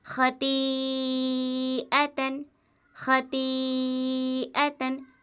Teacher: مد متصل ہوتا ہے اور 4 الف کے برابر وہ حرف کھینچ کر پڑھا جاتا ہے ، اس طرح خطیئتن خطیئتن، خا زبر خا، تو یا مد